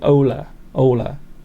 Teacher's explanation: I don't think you pronounce the H though, do you? I think it's more like Ola.